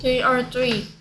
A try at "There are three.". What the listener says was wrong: They처럼 들립니다.